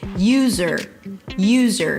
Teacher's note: You start with the word you and then you shift to the z sound. It's not yuw-z'r. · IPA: ˈjuːzəɹ